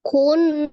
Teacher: Jadi nun tasdidnya wajib gunnah yang paling sempurna gitu ya. Ditekan, ditahan 2-3 harokat dan suaranya dimasukkan ke rongga hidung itu namanya gunnah. Nanya matobi alif, ada alif sebelumnya fathah, maka nanya dibaca 2 harokat.